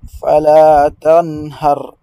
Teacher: la lettre nun doit être lue avec izhar, d'accord? Parce qu'il est suivi par une lettre de la gorge, la lettre ha plus précisément.